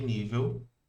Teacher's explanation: Se eu pegar a palavra, por exemplo, nível, palavra nível, se eu fizer a separação de nível, eu vou ter a sílaba tônica agora na penúltima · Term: paroxítona